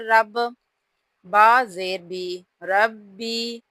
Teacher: را کے اوپر یہاں پر زبر ہے تو را کو ہم نے پر پڑھنا ہے، موٹا پڑھنا ہے